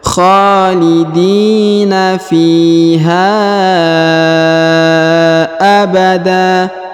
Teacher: huruf ha dipanjangkan 5 harokat karena terdapat garis panjang 5 harokat